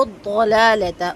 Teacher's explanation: ضاد کو بہت اچھا سا پر کر کے پڑھنا ہے، اور پر کرنے کے لیے اپنی زبان پوری اوپر تالو تک اٹھانی ہے